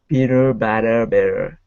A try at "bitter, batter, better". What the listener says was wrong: That's better. That's better. That is better.